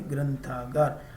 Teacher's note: સ્વામિત્વમ આમ થાય ગ્રંથાગાર તો ગ્ર ઉપર અનુસ્વાર પછી થે અને થ એ ત વર્ગનો છે તેથી ન લાગે